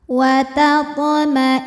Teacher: Huruf ta sukun dibaca secara huruf ta sukun dihukumi qalqalah sughra karena huruf qalqalahnya yaitu ta sukunnya asli dan ada di tengah bacaan. Maka cara baca huruf ta-nya adalah dipantulkan dengan pantulan yang kecil.